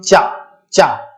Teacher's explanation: आपकी जो जिह्वा है वो कहां टच हो रही है? वो जो है स्पर्श कर रही है तालु को